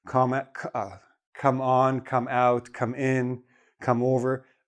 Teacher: we put a little bit extra stress on the preposition, so we have the correct phrasal verb that's understood